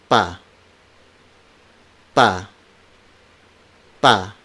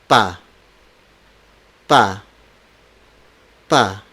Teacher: All the stop consonants are unaspirated. These stop consonants are namely P, B, T, D, K, G.